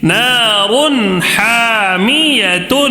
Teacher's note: ہا کو تھوڑا کھینچنا ہے الف مدہ ہونے کی وجہ سے